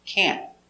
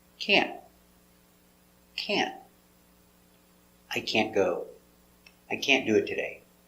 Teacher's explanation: We don't pronounce a t hard. Make a stop t. Can't. So just put your tongue up and stop.